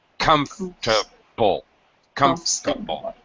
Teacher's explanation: not four syllables we reduce it to three syllables